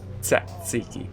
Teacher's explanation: Because I have a flat S, so when I say S, my tongue goes behind my bottom teeth instead of behind my top teeth.